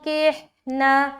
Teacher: और जब हम गुन्ना करते हैं तो हमारी ज़बान जो है ना मखरज को जाकर लगती है, तो उस तरीके से गुनगुनी आवाज़ निकलती है। ठीक है, इख्फा के वक्त ऐसा लगता है कि हम नाक से पढ़ रहे हैं, जैसे कि जब आप इख्फा अदा करेंगे तो गौर करना कि ज़बान कहीं भी टच नहीं है।